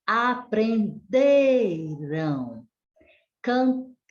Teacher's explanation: Já que as palavras com an são paroxítonas, então a sílaba mais forte vai ser a penúltima. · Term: palavras paroxítonas